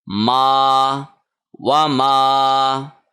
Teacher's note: میم ناک میں نہ پڑا جائے۔ وما نہیں ہوگا، وما، اور اس کو 1 سیکنڈ لمبا کرنا ہے کیونکہ یہ الف مدہ ہے